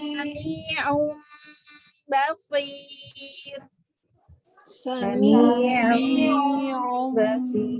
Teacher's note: Kalau iklab dia ditahan juga ya, 3 harokat, namun nunnya berubah menjadi mim, kemudian tidak ditekan ya, asal menempel.